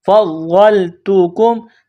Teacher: تا اور کاف کو باریک کرنا ہے،